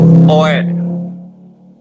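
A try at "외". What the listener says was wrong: O dengan E dibaca. Ya, W ya, bukan OE. Dibacanya W.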